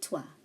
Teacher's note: Remember, OI is pronounced as oua, not oi.